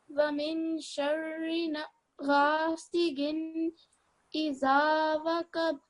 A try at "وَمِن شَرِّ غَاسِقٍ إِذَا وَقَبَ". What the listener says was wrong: So this is a qaf. وَمِن شَرِّ غَاسِقٍ إِذَا وَقَبَ. This is a kalkala letter.